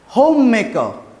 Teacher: Again the R sound will be invisible.